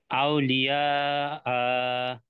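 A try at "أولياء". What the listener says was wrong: না, আতে টান হবে না। না না, আ বলে থেমে যেতে হবে শেষে। হ্যাঁ, আউলিয়া।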